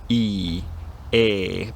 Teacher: E and E are both pronounced with the tongue extended to the front of the mouth near the teeth. · Bear in mind we're not talking about an A sound here, we're talking about a monophthongal E sound that keeps its quality. So they're pronounced with the tongue at the front of the mouth, and they're also both pronounced with unrounded lips.